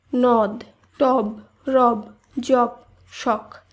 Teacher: একাক্ষর শব্দের অন্ত অধ্বনির বিবৃত উচ্চারণ হয়। এখানে একাক্ষর শব্দ বলতে বোঝায় যে শব্দগুলি শ্বাসবায়ুর এক ঝোঁকে উচ্চারিত হয়।